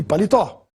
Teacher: a palavra palitó tem a sílaba mais forte na última tó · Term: oxítona